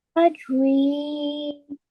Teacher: So ya madiyah is prolonged for 2 seconds only.